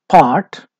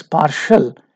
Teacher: it ends with t sound which is a consonant and it becomes partial it is changed with SH sound you can see that consonant change in the base then you